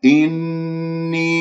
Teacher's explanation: إني نون مشدد الغنة أكمل ما تكون